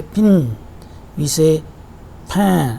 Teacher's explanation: when E is pronounced in pin and A is pronounced in pan, this E and A are nasalized. It is because of the following n sound, which is nasal. This E and A sound becomes nasal, and as a result these are represented by these symbols or this transcription.